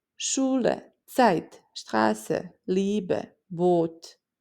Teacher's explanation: Sh at the start of Schule, the t sound for the Zeit, the sharp s in Straße, the long e in Liebe, and the long o in Boot.